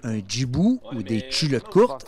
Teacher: La palatalisation du tch et du dj